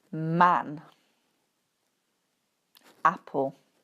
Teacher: The next sound is ‘a’ (æ), so very open mouth